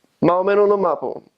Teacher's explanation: they won't pronounce the S. Everything's put together.